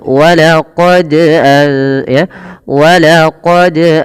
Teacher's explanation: pada lafal huruf dal yang dia berharakat sukun, ini wajib kita pantulkan. Kenapa? Karena dal memiliki salah satu sifat yang kita namakan dengan bacaan qalqalah.